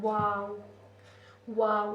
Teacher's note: फ वाव में जो है हम अपने जो होठों पर हमें गौर करना होगा जब हम वाव कह रहे होते हैं। हमारा होंठ जो है गोल होता है। · جو ہے ہم اپنے جو ہونٹوں پر ہمیں غور کرنا ہوگا، جب ہم واؤ کہہ رہے ہوتے ہیں ہمارا ہونٹ جو ہے گول ہوتا ہے